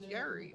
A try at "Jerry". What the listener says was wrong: Why do you keep calling Jerry Gary? Or you're saying it like with the G instead of a J. It's not Gary, it's Jerry.